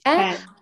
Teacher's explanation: чтобы не было пам, должно быть что-то между а и э